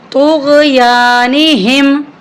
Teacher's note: اکثر لوگ یہاں پر پڑھتے ہیں طغیانہم، غین کو بھی ہلا کے پڑھتے ہیں اور طوا کی جگہ تا کو پڑھ دیتے ہیں، جو کہ غلط ہے. یہاں پر طوا ہے، اس کو ہم نے موٹا کر کے پڑھنا ہے اور غین کے ساتھ ملا کر پڑھنا ہے.